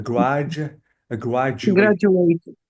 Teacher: If you have D and U, you have to say J.